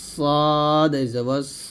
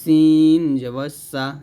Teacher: এখানে সদ মোটা করতে হবে সদ জবর স, সিন পাতলা হবে সিন জব সা